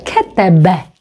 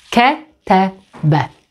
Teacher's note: we have three short vowels e